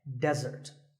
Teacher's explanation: of a meal and it should not be confused with desert here the stress is on the first syllable · the stress is on the first syllable, which is de, desert.